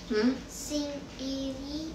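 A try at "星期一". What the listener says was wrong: Q itu bacanya ci, singci i.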